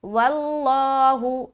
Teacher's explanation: آگے واللہ، لفظ اللہ کا لام سے پہلے واو حرف ہے، اس کے اوپر زبر ہے، تو اس کو ہم کیا کریں گے؟ موٹا کریں گے لفظ اللہ کا لام کو